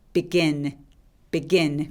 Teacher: begin 강세가 이음절에 옵니다